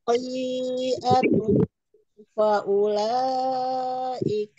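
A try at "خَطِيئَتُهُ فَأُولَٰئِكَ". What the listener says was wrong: Panjang 4 harakatnya kurang, Ibu. Khotinya tuh kurang.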